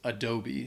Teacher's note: So that first A is the schwa sound, and the E at the end is the long E sound.